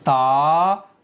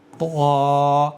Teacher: جب بھی ان 7 حرفوں کو پڑھیں گے تو یہاں طا آ گیا ہے حروف مستعلیہ میں سے، تو اس کو بھی اسی طرح سے پڑھیں گے جیسے طا، اس کی آواز ہے تا اور اس کی آواز ہے طا۔ تو مستعلیہ نے ایک مخرج کے ہونے کے باوجود ان دونوں میں فرق پیدا کر دیا ہے